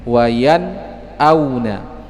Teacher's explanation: nun sukun yang bertemu dengan hamzah. Maka cara membacanya harus jelas nunnya. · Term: إظهار حلقي